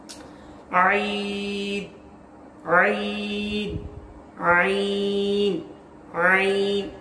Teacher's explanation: तो 3 हल के हिस्से हैं, और बीच का जो हिस्सा है वस्त जिसे कहा जाता है, वहां से आइन अदा होता है